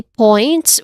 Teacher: points, which has a clear oi diphthong sound. So the diphthong sound here is oi.